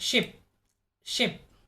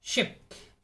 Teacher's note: The body of the tongue is raised high and is as close as to the roof of the mouth. The jaw drops very little and the mouth is barely open.